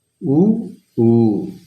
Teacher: இதழ்களை குவிப்பதால் பிறக்கும் எழுத்துக்கள்